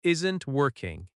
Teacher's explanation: Isn't working has stress on work.